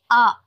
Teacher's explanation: हम आ का उच्चारण करते हैं तो हमारा मुख का द्वार है वह पूरी तरह खुलता है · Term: विवृत स्वर, विपरीत स्वर